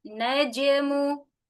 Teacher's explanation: Qalqalahnya najmu, najmu. Tidak diakhiri dengan hamzah, bukan dibaca dengan najmu, tapi najmu.